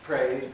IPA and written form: preɪd (prayed)